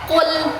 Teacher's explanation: Kenapa dibaca tebal? Adanya pangkal lidah yang terangkat. · bukan qul tapi qul karena dia pangkal lidah sedikit dibelakangkan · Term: huruf qof